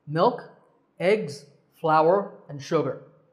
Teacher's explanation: are four items in this list separated by commas notice how when we read the sentence we naturally pause after each item in the list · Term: pauses